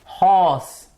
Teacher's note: horse is a glottal sound it comes through the throat by the vocal cords being the articulators